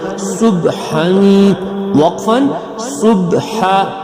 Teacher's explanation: صاد با پیش صب، حا الف دو زبر حن، صبحا، وقفا صبحا، حا حلق سے ادا ہوگا